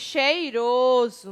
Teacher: palavra pousa então todas essas palavras elas são palavras em que o s está entre vogais e quando pronunciadas ele tem um som de z